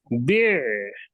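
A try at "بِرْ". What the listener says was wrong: আবার বা যেন লম্বা না হয়, বিয়ার।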